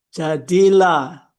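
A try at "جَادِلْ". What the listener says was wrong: Ja- Dipanjang. Ja-nya tetap panjang, Pak. Ja dipanjangkan.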